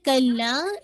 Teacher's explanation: کلا کے اندر مد ہے، مد جائز منفصل، اس کو بھی آپ نے انشاءاللہ 4 to 5 کاؤنٹ کھینچنا ہے ، کیونکہ حمزہ نیکسٹ ورڈ کا حصہ، انہا، میک شور انہا